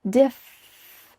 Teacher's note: Diff with a clear F sound. Your top teeth are on your bottom lip.